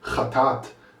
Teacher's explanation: the word chatat has an Aleph there, but the Aleph is actually not really pronounced. I don't say chata'at.